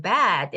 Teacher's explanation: bad 발음할 때는 bad 이렇게 하면서 목구멍 쪽을 더 길게 이렇게 크게 열어야 돼요